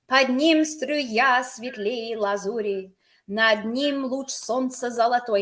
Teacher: Notice the rhythm. It's iambic pentameter. It bounces very nicely.